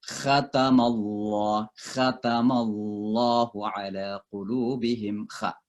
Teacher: Kha itu sekali lagi tenggorokan atas ya. · ini satu tempat keluar dengan ghain dengan kha itu satu tempat keluar, yaitu tenggorokan atas.